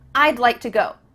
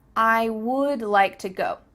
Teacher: we're cutting off all the sounds in the word wood except for that final D